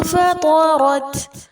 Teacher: نون ساکن کے بعد فا ہے، اخفا کریں گے، طا اور را کو پر کریں گے اور تا ساکنہ پر ہمس کی جائے گی